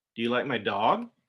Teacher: usually if we're asking a question do you like my dog we will go up at the end of the sentence but when we're making a statement we don't do that but